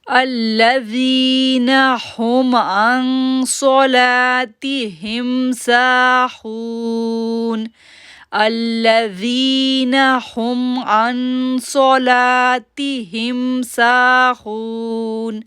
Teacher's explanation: یہاں پر ہم جو ہے وہ غنہ کریں گے، اکفا غنہ کریں گے